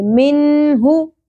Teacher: نون ساکن کے بعد حروف حلقی میں سے ہ آ گیا، اس لیے یہاں پر اظہار کریں گے، ظاہر کر کے پڑھیں گے. منہ، تو واو مدہ ایک الف کے برابر کھینچنا ہے.